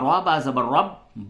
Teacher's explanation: र ये जो है इस पर जबर है इसको आप पूर करके पढ़ेंगे